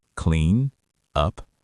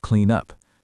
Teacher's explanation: We glue the words together, consonant to vowel linking.